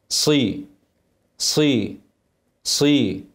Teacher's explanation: صاد مكسوره مطبقه حافظه على الاطباق عشان ماترقش